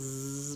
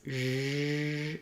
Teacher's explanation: if I go from z to zh, the tip of my tongue goes down. It pulls back a little bit. The back of my tongue lifts. There's a wider opening. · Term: zh sound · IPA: /ʒ/